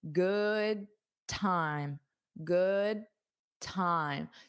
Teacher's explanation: you don't have to pronounce that D